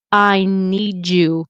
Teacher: A D plus a Y. I talk about this on my YouTube channel. Can turn into a J sound. So if someone says, I need you to tell them, it's going to be need you, right?